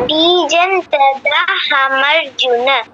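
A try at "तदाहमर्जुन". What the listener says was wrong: আচ্ছা তা দা নয়, তা দ, বাকিটা ঠিক আছে।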